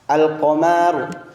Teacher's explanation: lam pada alif lam dibaca jelas dan tidak dilebur ke huruf berikutnya. Jadi dapat disimpulkan bahwa alif lam qamariyah adalah bacaan di mana huruf lam dibaca jelas ketika bertemu dengan huruf qamariyah. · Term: alif lam qamariah